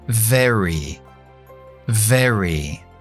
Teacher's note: La V es muy distinto a la B en inglés. Es fricativa y es labio dental. No juntamos los labios.